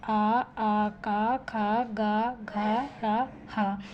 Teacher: जो वर्ण हम हमारे बोलते समय जो गले से आवाज़ आती है, गले के द्वारा बोले जाते हैं, तो उसे कंठस्थ वर्ण कहते हैं